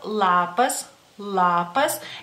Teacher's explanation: es una l como más cerca de los dientes digamos así una Ela más dura más concentrada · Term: una L más dura